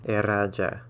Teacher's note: This is going to be a rolling R like in Spanish